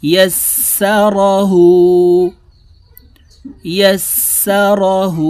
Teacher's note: র জবর র, হা উল্টা পেশ হু, হার উপরে উল্টা পেশ আছে, ঠোঁট গোল করে এক আলিফ টেনে পড়ব।